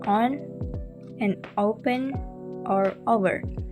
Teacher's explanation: the tongue body is retracted from the neutral position, meaning it moves toward the back of the mouth or throat. So we can hear this in words like on and open or over. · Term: plus back